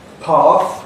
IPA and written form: pɑːθ (path)